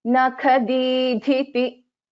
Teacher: Here nakha kha is a mahaprana, dha is a mahaprana.